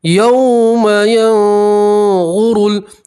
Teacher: نون سکین کی آواز کو آپ ناک میں چھپائیں گے اور ایک الف کے برابر گننا کریں گے